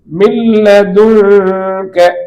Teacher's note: நூனுடைய குன்னா சப்தமும் இங்க இருக்காது, முழுமையாக நூன் லாமுக்குள்ளே வந்து விட்டது, நூனுடைய மூக்கந்தன் ஒலி கூட இங்கு இல்லை. எனவேதான் பிலா குன்னா மில்லதுன்க.